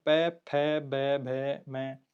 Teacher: ओष्ठ होठ से दोनों होठ मिलते हैं। · दंत्य में त, थ, द, ध, न। होठ से दोनों होठ मिलते हैं तब प, फ, ब, भ, म।